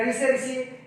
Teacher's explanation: ऋषि, इसका उच्चारण स्थान मूर्धा होता है।